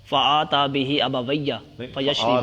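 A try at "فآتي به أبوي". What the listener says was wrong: آتی بھی ابویہ، آتا نہیں پڑھنا، ان کو لاتا تھا اپنے ماں باپ کے، دودھ کو لاتا تھا اپنے ماں باپ کے پاس،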